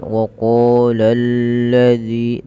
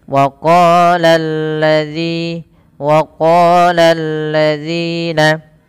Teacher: lamnya dibaca tipis, jangan dibaca tebal, jangan waqalalladzi tebal.